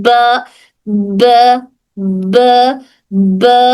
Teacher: दोनों होंठों का गीला वाला हिस्सा मिलता है। · पूरी हवा बंद हो जाती है, फिर उसके बाद हवा हल्के से बाहर निकलती है।